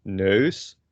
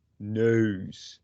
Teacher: and the difference is with the flemish version you say just it's not a diphthong you just say one sound er nose curcum and dutch dutch people diphthongize it and they